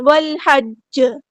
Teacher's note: یعنی کہ آپ نے اس میں شد کا دھیان رکھنا ہے، اسٹرس کے ساتھ اس جیم کو ادا کرنا ہے تاکہ دونوں جو جیم ہے وہ ادا ہو جائے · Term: قلقلہ کبرا